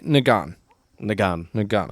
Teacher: it was nga with a falling tone